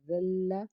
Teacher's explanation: زال کو لام سے ملائیں گے، زا لام زبر زل، لام زبر لا، زلہ، لام تشدید کے ساتھ، اس لیے لام کو دو بار پڑھا جائے گا۔ زل یا زرزی، یا ساکن سے پیچھے زیر ہے، اس لیے ایک الف کے برابر اس سے بھی کھینچیں گے۔